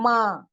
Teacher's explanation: सिर्फ मा नहीं है मा है ना इसको खींचा गया है नून की साउंड नाक में जाकर छुप छुप कर निकली हुई है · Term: नून गुना